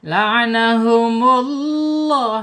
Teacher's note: laahumullah [bernyanyi] ya di sini ada lam jalalah ya lam jalalah sebelum lam jalalah harakatnya domah maka wajib dibaca tafkhim tebal